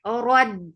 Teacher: Ow, nu for dhamma, circle lips, the sound is short. Rad, ra is heavy with the takraar for fatha open jaws attached.